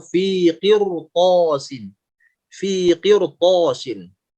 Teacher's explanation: Tapi karena setelah huruf ro-nya itu diikuti huruf isti'la, maka huruf ro di sini jadi tebal.